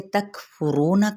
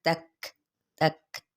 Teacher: لیما ان حرکات کو لمبا نہیں کریں گے، تک فرونا کاف پہ ہمس ہے لیکن کلکلا نہیں کرنا، تک کر کے نہیں پڑھنا، تک تک یہ والی ساؤنڈ ہوتی ہے۔